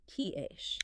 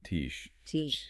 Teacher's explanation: the sudden explosive release of the T block creates that sharp biting edge of the C sound.